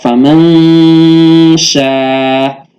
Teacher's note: The nun sakina therein is being hidden into the shin with gunna, is being hidden with the gunna, and then there is a preparation for the articulation or pronunciation of shin. · So practically you have to, the way it is being pronounced practically is that you have to bring about gunna, complete gunna for 2 seconds. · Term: ikhfa haqiqi